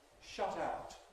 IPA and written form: ˈʃʌt ˈaʊt (shut out)